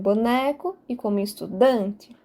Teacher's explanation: são as palavras que apresentam a penúltima sílaba mais forte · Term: paroxítonas